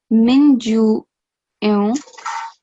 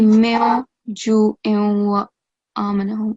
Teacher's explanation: Make sure that the noon is silent. So when you join the noon and the jim, instead of min ju it should be meo ju wa amanahum.